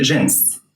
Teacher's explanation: most people say jens with an s sound at the end instead of jeans but both are correct